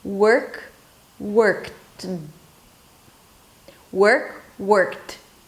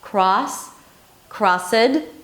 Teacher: It's like the 'd' which is a voiced consonant, takes the feature the voicing feature of whatever comes before